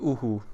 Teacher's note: visarga following a vowel, it repeats the sound back to you in an aspirated way